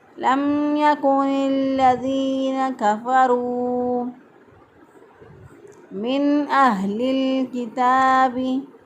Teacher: दुरुस्त अदायगी है लम यकुनिल्लज़ीना कफ़रू मिन अहलिल किताबी, कफ़रू रा पेश फ़ारू, वाव मद्दा, वाव साकिन पहले वाले हरफ पर पेश, एक हरफ के बराबर लंबा करेंगे।